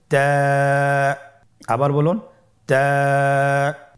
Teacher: তা হরফটি বারিক হরফ এবং এক আলিফ টেনে পড়তে হবে।